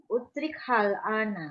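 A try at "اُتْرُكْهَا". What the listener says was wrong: Utrukha. Laisa utrikha. Utrukha.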